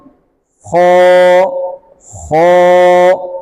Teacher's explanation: मोटा करते वक्त ज़बान की जो जड़ है वो तालु की तरफ उठ जाएगी। ज़बान की जड़ तालु की तरफ थोड़ी उठेगी।